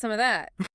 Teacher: The V sound is gone. The weak vowels are gone.